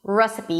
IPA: ˈresəpi